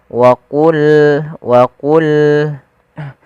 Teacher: Pada lafal wa qulna ya qa, salah satu huruf yang dia kita namakan dengan salah satu sifatnya adalah sifat huruf isti'ala, yang mana pangkal lidah kita harus kita angkat sehingga terdengar suara qa-nya menebal.